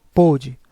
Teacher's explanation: com o circunflexo, o som fica mais fechado